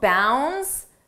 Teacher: the D is not pronounced